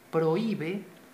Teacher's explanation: débil en la vocal débil entonces sí hay un hiato y la mayor fuerza de voz cae sobre la vocal débil